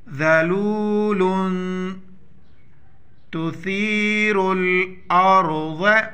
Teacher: یہاں پر اخفاء کریں گے ساؤنڈ ان نوز